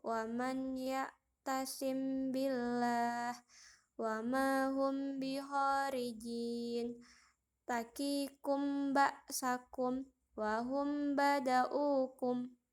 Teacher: mahraj dari huruf hijaiyah mim dan huruf hijaiyah ba adalah pertemuan antara bibir bawah dan bibir atas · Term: ikhfa syafawi